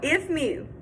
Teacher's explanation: we're going to unstress the ef and stress the mu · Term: unstressed syllable versus stress syllable, unstressed syllable versus stressed syllable